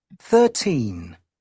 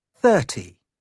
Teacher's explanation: Ketika 13, maka yang harus ditekankan ini stress the last syllable.